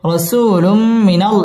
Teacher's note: র পুর হবে রসু মধ্য তবাই একালিফ টেনে পড়তে হবে রসুলুম তানবিনের বামে মিম আসছে মিম ইদগামে বা গুন্নার হরফ এখানে গুন্না সহ মিলিয়ে পড়তে হবে